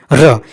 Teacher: र जब बोलते हैं ना तो मुख विवर में क्या होती है? कंपन होती है · र जो होता है ना आपका, वो पार्श्विक व्यंजन नहीं होता है, वो आपका होता है प्रकंपित व्यंजन होता है